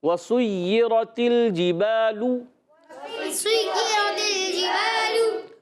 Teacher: را پر زبر ہے، را کو پر رکھنا ہے، اور تا کو لام سے ملانا ہے، لام کو ہلانا نہیں ہے، یاد رکھنا ہے اچھی طریقے سے۔